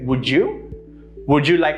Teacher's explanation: would and you, the sound changes a little bit into a j sound